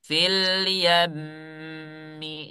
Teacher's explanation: rasakan suaranya itu keluar lewat rongga hidung. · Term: gunnah musyaddadah